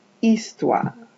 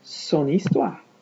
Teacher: in French, you don't hear that H. You just hear that I.